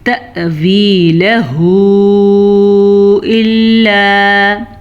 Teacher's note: حمزہ کے اوپر ساکن ہے تو ہم حمزہ کو جھٹکے کے ساتھ پڑھیں گے